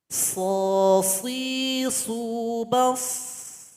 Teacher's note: Kalau ini lidah, ini langit-langit, maka dia berkumpul di sini. Kemudian sifat berikutnya dari sad ini adalah ada bunyi yang tajam, sofir